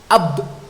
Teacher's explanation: ketika ba itu disukun tidak akan ada udara keluar. Ab, nah, itu tidak keluar. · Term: jahar